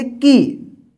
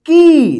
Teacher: छोटी ई के उच्चारण में थोड़ा समय लगेगा, लेकिन बड़ी ई का जहां पे उच्चारण होगा इससे थोड़ा लंबा उच्चारण यानी बोलते समय थोड़ा ज्यादा समय होगा